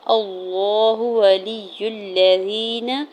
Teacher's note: حمزہ کے زبر کو لام جلالہ کے ساتھ ملاتے ہوئے پڑھیں گے۔ لام مشدد کے اوپر کھڑی زبر بھی ہے تو اللہ کے نام کو پر پڑھیں گے کیونکہ اس سے پہلے حمزہ کے اوپر زبر ہے، ٹھیک ہے۔ · اللہ ولی الذین، حمزہ کے زبر کو لام جلالہ کے ساتھ ملاتے ہوئے پڑھیں گے۔ لام مشدد کے اوپر کھڑی زبر بھی ہے تو اللہ کے نام کو پر پڑھیں گے کیونکہ اس سے پہلے حمزہ کے اوپر زبر ہے